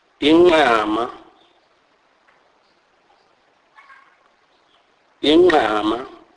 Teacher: This is a nasalized form of the Q click sound